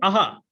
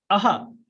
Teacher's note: विसर्ग जो ध्वनि है वो कंठ से निकलती है, कंठ से संबंधित है। आप बोलिए ना आहा, तो आप देखोगे कि आपका कंठ में कंपन हो रहा है, मतलब आपका कंठ प्रभावित हो रहा है।